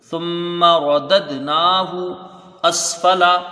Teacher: نون کے اوپر کھڑا زبر ہے، ایک الف کے برابر اس کو کھینچ کے پڑھا جائے گا ، ہا کے اوپر پیش ہے، اس کو جلدی پڑھیں گے،